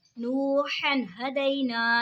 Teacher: नूहन हदैना, नूहन हदैना, यहाँ पे देखिए जी दो ज़बर की तनवीन के बाद हुरूफ़े हल्की का हा है तो इज़हार होगा यानी गुन्ना नहीं करेंगे। नू जो दो ज़बर की तनवीन है उसको ज़ाहिर करके पढ़ेंगे